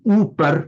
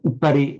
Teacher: Hindi upar in Sanskrit is upari with a short u. Upar long u in Hindi, but upari in short u in Sanskrit